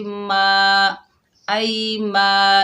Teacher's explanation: मीम के ऊपर ज़बर, आगे अलिफ खाली है, इसे एक अलिफ की मिकदार खींचकर पढ़ेंगे